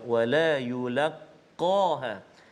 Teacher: Huruf qaf dekat situ, qaf isti'la tebal, maka kita baca bagi dia bunyi tebal lah.